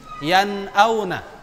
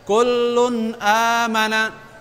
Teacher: Maksudnya adalah nun dan tanwinnya dibaca jelas tanpa ada dengungan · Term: izhar